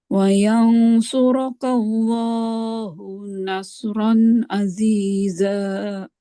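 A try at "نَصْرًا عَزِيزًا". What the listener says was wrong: Ya, ainnya yang terakhir kurang. Nasran aziza.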